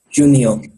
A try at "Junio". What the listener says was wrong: Remember, J doesn't make a just sound. It makes more of an H sound.